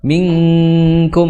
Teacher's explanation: langsung diengkan tapi eng yang tipis bukan eng tebal